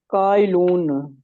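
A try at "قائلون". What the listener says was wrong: कायलूना, वाव नहीं लगाएंगे, very good.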